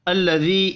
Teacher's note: یا مدہ ہے، ایک الف کے برابر کھینچ کر پڑھیں گے